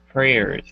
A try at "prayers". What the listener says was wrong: Open up a little bit more with your P. Prayers.